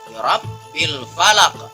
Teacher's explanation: Dan di ayat selanjutnya ada kata-kata birabbi, ada ra di situ dengan berharokat fathah, berarti ra-nya ra mufakhama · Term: ra tebal